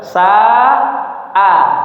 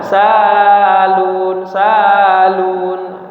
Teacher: harus terpisah antara huruf sin, sa dengan hamzahnya a